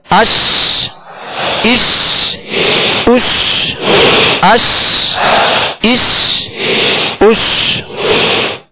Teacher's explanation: تو شین کو جب ادا کریں گے تو بیچ زبان، بیچ تالو سے لگے گا تو شین ادا ہوگی، اور شین کی ادائیگی میں آواز منہ میں پھیل جائے گی۔